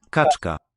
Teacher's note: Kaczka. Kaczka, that's that retroflex affricate, that's voiceless